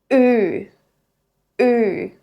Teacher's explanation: You'll feel the back of your tongue lift up and push forward towards the front of the mouth. The key here is to keep your lips flat.